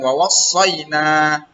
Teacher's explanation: Pertama, pada kata wawassayna itu terdapat hukum mad asli ya. Di depan na itu ada alif nak, maka na-nya panjang